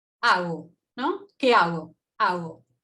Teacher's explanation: Ese sonido le corresponde a este símbolo, es velar, aproximante sonoro, oral. Y entonces lo que vemos es que hay un grado de constricción en la boca, pero no es tan alto, no hay tanta constricción.